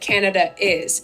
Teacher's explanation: So with that sort of English accent, they include an intrusive R to kind of connect words that end with a vowel and also start with a vowel